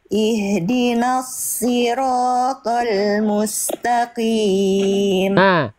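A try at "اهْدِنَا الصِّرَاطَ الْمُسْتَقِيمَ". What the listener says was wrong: Sodnya tinggal ditebalkan, pangkal lidahnya diangkat Bunda. Sod itu pangkal lidahnya diangkat Bunda. Kalau saya mengibaratkan, menganalogikan pangkal lidah diangkat itu seperti Bunda mau nelan sesuatu, didorong lidahnya ke dalam. Itu yang tadi, dorong ke dalam. Jadi rasakan ketika Bunda melafalkan huruf tebal, khususnya ketika kasrah misalnya, rasakan dorongan lidah ke dalamnya tetap ada.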